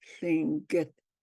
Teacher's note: So it's uh, it's a voiceless L